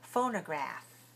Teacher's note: we have a third syllable which is unstressed but clear right clear so we don't say phone we say ah phonograph